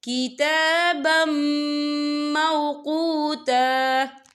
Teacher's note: یہ دیکھیں کتابم، با کے پر تنوین ہے، تنوین کے بعد جو ہے میم آ رہا ہے، اور میم جو ہے حروف یرملون میں سے ہے، تو یہاں پر ادغام ہوگا، تو ہم اسے غنّے کے ساتھ پڑھیں گے.